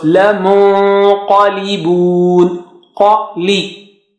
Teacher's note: Now qaf is high sounding, so your noon sakina also will be high sounding because you are preparing yourself and you are going close to the makhraj of qaf and then then holding back to give sound of ghunna.